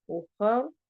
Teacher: रॉ को एंड पे मोटा पढ़ना है, स्टॉप कर देंगे, साकिन हो जाएगा।